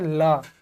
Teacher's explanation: ल का उच्चारण जब हम कर रहे हैं तो जीभ जो है आगे आ रहा है। मसूड़ा को छू रहा है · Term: पासर्विक व्यंजन